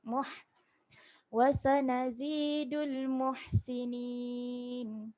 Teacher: muh ada angin, ha pedas